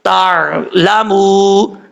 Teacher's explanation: لام زبر لا، میم پیش مو، آر لامو، میم الف زبر ما، لام الف زبر لا، ما لا، تا عین زبر تار، لام زبر لا، تار لا، میم واو پیش مو، تار لامو. یہاں پہ واو مدہ ہے، ایک الف کی مدہ لمبا کر کے پڑھیں گے